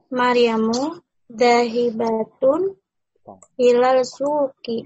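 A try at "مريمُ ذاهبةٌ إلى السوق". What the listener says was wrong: Ilas, sini kan huruf samsi ya. Ilas. Jangan lupa ya, sini itu huruf samsi ya, sehingga dimasukkan.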